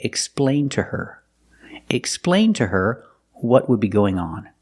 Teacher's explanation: we have to use the preposition to pronounced ta